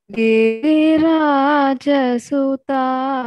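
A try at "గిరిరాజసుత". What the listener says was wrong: You are saying Giri Raja Sutta. Don't change the tune. Giri Raja Sutta.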